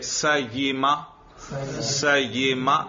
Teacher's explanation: دیکھو زبان کے درمیان سے یا ادا ہوتی ہے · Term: وسط لسان